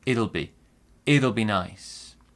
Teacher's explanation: Small stress on it, big stress on nice, and we say it'll be nice.